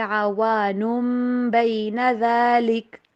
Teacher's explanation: نون کی آواز، تنوین کی آواز میم میں بدل جائے گی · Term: اقلاب